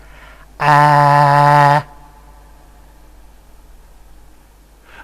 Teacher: the tongue is extremely low and has a very much front quality the most front quality and the result would be something like